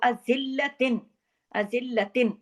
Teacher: ता दो ज़ेर, तिन पे पूरा इजहार हल्की, क्योंकि आगे आइन है, आइन हरफ हल्की है।